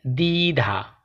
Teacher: শব্দের শুরুতে ব ফলা যুক্ত হলে ব ফলার উচ্চারণ হয় না।